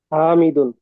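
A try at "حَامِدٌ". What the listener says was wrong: Good.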